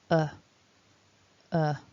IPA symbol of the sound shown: ə